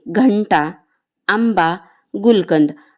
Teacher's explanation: अनुनासिका बद्दल शीर्षबिंदू लावा शीर्षबिंदू म्हणजेच अनुस्वार उदाहरण घंटा आंबा गुलकंद जेव्हा तुम्ही घंटामध्ये घ उच्चार करता तेव्हा तो उच्चार अनुनासिकातून आलेला आहे